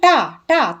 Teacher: टा का उच्चारण स्थान क्या है? मूर्धा, तो ये मूर्धन्य है। वो कैसे? ताल से ऊपर वाले भाग को मूर्धा कहते हैं।